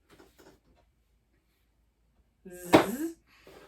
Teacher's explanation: This is our voiced thin stream.